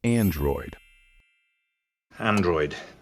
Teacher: the stress in this word should be on the first syllable